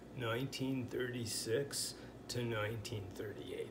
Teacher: when the word two is unstressed, it sounds something like ta. So this would be said 1936 to 1938.